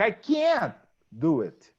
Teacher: When he says, I can't do it, many times you don't listen to can't. The T is not even pronounced, but it's stressed